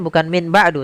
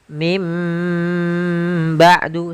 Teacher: Contoh lagi, misalkan min ketemu dengan ba'du, maka kita bacanya dengan bukan min ba'du, tapi mim ba'du sambil ditahan dengan gunnahnya. yaitu suara nun yang dirubah menjadi suara huruf mim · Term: iqlab